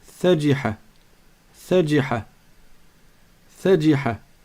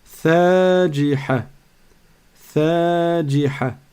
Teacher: J'ai donc bien ajouté un temps après la fatha. Après la prolongation, j'ai ajouté, après la fatha, j'ai ajouté une prolongation qui se dessine par le alif.